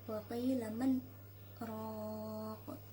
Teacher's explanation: berhenti sejenak kira-kira satu alif tanpa bernafas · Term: sakta